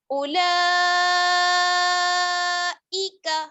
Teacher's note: مد متصل 4 الف کی برابر، لام کو ہم کھینچیں گے اور کھڑا زبر ہے تو 2 حرکات اور ملا لیں گے.